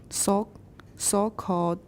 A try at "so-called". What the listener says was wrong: So, not saw. So.